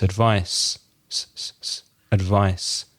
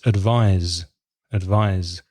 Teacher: The verb advise has an S, but it sounds like a Z · The difference in pronunciation with advice with a C, it's without vibration. It's without vibration in the throat.